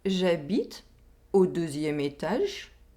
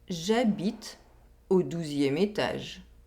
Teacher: Here, we have a difference in oral vowel sound. We have the [ø] sound in the first sentence, and the [u] sound in the second sentence.